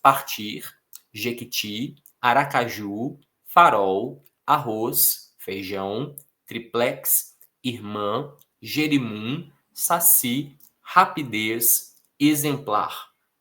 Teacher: Todas elas oxítonas, força na última sílaba.